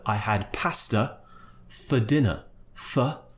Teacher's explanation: we could pronounce it as fer with the schwa sound so F and then just a schwa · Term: weak forms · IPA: /ə/